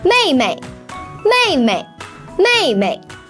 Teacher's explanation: the second of May is pronounced as a neutral tone